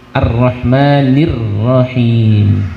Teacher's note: dia tipis, dia tetap satu huruf, jangan ditekan